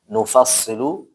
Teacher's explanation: Nufassilu jangan dibaca tebal kecuali di sadnya